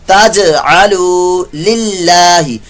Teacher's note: اللہ کا لام سے پہلے زیر ہو تو باریک پڑا جائے گا